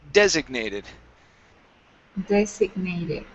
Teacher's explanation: Here, this word is pronounced designated. So the stress is at the very beginning of the word.